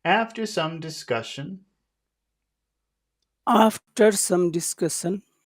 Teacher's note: just going to make all of these important syllables High okay they're all going to be high except for the final one we'll make it low · so you just start high and go low to discussion